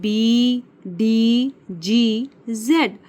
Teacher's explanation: While saying these alphabets, you will feel some vibration. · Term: वॉइस साउंड